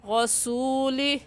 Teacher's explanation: را کے اوپر زبر ہے، موٹا کر کے پڑھیں گے، یعنی اپنے دونوں ہونٹوں کو گول کر لیں گے